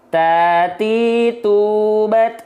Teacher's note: Ujung lidahnya diapain? Ujung lidah menyentuh dengan pangkal gigi seri atas. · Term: huruf ta